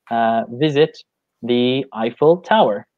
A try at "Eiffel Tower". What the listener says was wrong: Yeah, interesting pronunciation there, because in English we say Eiffel Tower. Almost sounds like an iPhone. Eiffel. you pronounce it kind of like the German way.